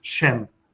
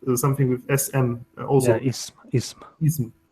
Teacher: So there is sh turned into an s.